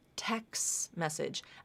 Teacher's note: again it's a t that was dropped